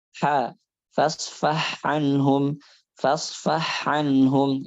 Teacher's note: dengan menyempurnakan dua sifat yaitu sifat hamas dan juga rakhawah pada huruf ha